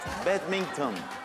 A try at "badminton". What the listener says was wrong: G yok arada.